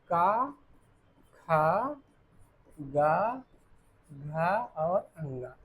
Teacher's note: कंठ में क्या आएगा? का वर्ग, का वर्ग।